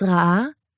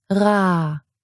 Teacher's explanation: even without the glottal stop, you're still going to get a little impulse of energy on the second vowel. It's ra'ah, not ra.